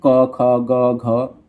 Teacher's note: क वर्ग का उच्चारण कंठ से होता है